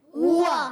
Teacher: ہا پر پیش ہے, ہا جو ادا ہوتا ہے حلق کے نیچے والے حصے سے, ہوا. واو پہ زبر ہے, ہا پر پیش ہے دونوں گولائی سے